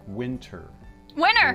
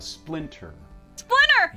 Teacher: Americans and Canadians as well very commonly drop a t after an N